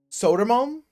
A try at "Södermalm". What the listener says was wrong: Soda? Soda! No. O with the dots, it changes. It's not an O. It is pronounced so kind of like how you Her. No, you wrong direction.